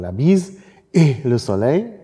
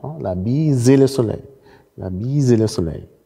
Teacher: Können Sie sehr schön sehen, la bise le soleil. Das stimmhafte S von bise rutscht in den Anfangsrand von E. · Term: Enchaînement